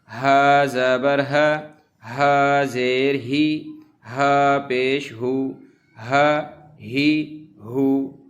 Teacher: یہ گول ہا جو ہے صرف منہ سے ہوا نکالیں گے، پڑھیں گے ہا۔ دوسرا جو گلے سے ہا اس طرح پڑھنا صحیح نہیں ہے، اس کو صرف منہ سے ہوا نکالنے کی طرح پڑھیں گے۔